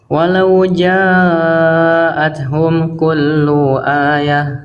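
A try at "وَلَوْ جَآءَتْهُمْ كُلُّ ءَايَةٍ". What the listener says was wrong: Lu panjang kepanjangan. Satu harokat aja.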